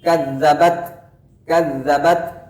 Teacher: hams atau nafas yang mengalir itu tercipta dalam keadaan alami ketika kita menyentuhkan ujung lidah kita ke gusi gigi seri atas, dan di saat kita lepaskan di sanalah muncul anginnya.